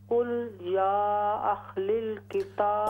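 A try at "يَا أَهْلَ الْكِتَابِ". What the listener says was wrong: कुल या अहलल, लाम पर जबर है, कुल जी।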